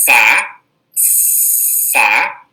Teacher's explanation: Eu pego o meu lábio inferior, coloco a minha arcada dentária superior sobre o lábio inferior e sopro. E depois eu pego o fonema A, então fica Fá, Fá.